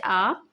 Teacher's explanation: विवृत यानी कि ओपन मुख द्वारा पूरा खुला रहता है